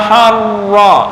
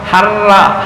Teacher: Ah, kalau ini tafkhim harro ya, bukan harra ha.